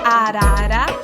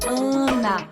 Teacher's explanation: você fala arara, com o A bem aberto, arara, e você diz Ana, com aquele som nasalizado. Se você colocar o dedo aqui, do ladinho aqui do seu nariz mesmo, você vai sentir vibrar quando você fala Ana, né?